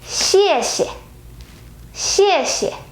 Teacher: So the rule is when the vocabulary is with two words and the second character is the repetition of the first character, and then the second character has to change to a neutral tone.